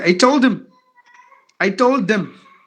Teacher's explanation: if you put this in a sentence that all the H's are gone